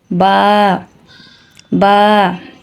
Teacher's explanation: বা ঠোঁটের ভিজা অংশ থেকে উচ্চারিত হয়